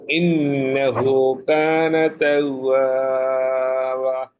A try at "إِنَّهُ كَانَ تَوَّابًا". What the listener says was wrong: বা বায়ে একটু টান দিতে হবে, একালিফ। জি মোটা হরফের দিকে আরেকটু লক্ষ্য করে উচ্চারণ করতে হবে। যেখানে মোটা হরফ আসে, যেমন ওয়াস্তাগফির, এখানে তাগে বললে হবে না, তাগফির গোল করে। তারপর তাওয়াবা, শেষের দিকে টান থাকে, এগুলো একটু খেয়াল করে পড়বেন। তাওয়াবা এইভাবে।